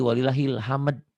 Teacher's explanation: Harusnya walillahil hamdu. Dihentikan jadi walillahil hamd.